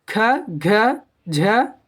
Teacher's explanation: तो महाप्राण क्या होता है दोस्तों, जिन व्यंजनों के उच्चारण में श्वास वायु अल्प प्राण की तुलना में कुछ अधिक निकलती है, क्या होती है, श्वास जो होती है कुछ अधिक निकलती है, उन्हें हम महाप्राण कहते हैं।